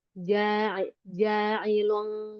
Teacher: kalau ikhfa huruf fa tingkatannya tengah jadi enggak eng banget.